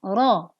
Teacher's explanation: bukan dibaca ra tetapi ro. Pangkal lidah mengangkat. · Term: ro tafkhim